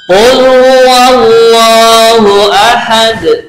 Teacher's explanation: dal karena mati sukun diwakafkan, ini dibaca qalqalah